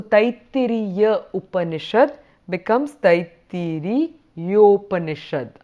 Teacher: when we were trying to go from a to u the sound in the middle was the o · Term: sandhi